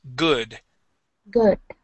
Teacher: instead of using an oo sound, we would use an uh sound